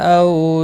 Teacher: او واولین ہے، تھوڑا نرمی کے ساتھ کھینچ کر ادا کریں گے۔